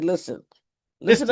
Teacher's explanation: We don't pronounce the T. We say listen.